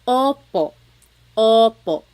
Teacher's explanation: Sometimes I think of it like having a ball in your mouth. Your tongue gets kind of pushed back and down a little bit, and the inside of your mouth is open and wide.